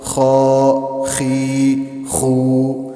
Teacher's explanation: خا یہ آپ دیکھیں یہاں سے گلے کے بالکل شروع والا حصہ جو منہ کی طرف ہے یہاں سے خا ادا ہوتا ہے